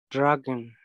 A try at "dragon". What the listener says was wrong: Not a, dre, eh. Dragon.